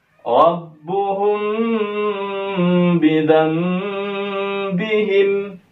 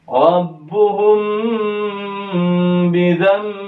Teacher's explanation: Jadi ada dua dengung. Dengung pertama di ikhfa syafawi, dengung kedua di iqlabnya.